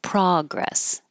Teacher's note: if this is a noun, then the stress is on the first syllable, progress. And it could be spelled A-H because that's how I represent the ah sound.